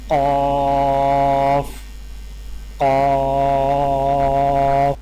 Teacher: قاف کی ادائیگی میں زبان کی جڑ کو کوے کے متصل تالوں پر لگا کر موٹی آواز میں پڑھیں